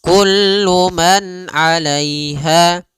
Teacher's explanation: Pada lafal di sini ada izhar halqi, yaitu suara nunnya dibaca dengan jelas ketika bertemu dengan huruf ain